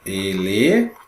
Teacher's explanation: Antepenúltima sílaba tônica. Tônica é forte, significa dizer que eu estou diante de uma proparoxítona.